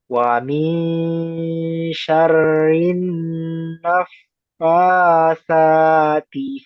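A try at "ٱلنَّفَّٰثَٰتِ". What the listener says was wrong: Ya, masih fa sama lamnya. Naf fa, coba ikuti. Naf fa lagi Naf fa Naf, nah itu panjangin. Naf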